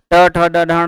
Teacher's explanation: ट, ठ, ड, ढ, ण बोलने में जीहवा एकदम चिकने वाले भाग को स्पर्श कर रही है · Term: मूर्धा